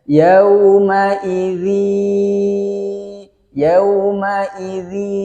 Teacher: panjangnya sama dengan Mad Thobi'i yaitu dua harokat itu dibaca atau dibaca dua ketukan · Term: Idgham Bighunnah